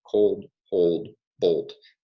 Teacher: So words like cold, hold, bolt have a monophthong, but in other words that have this O phoneme, it's diphthongized.